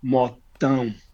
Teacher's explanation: when you add the tilde, it goes like a very nasal sound